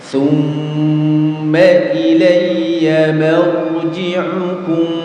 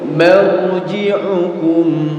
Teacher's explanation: Beda ya, mimnya tipis ya. Yang menebal itu ketika ro sukunnya. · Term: ro tafkhim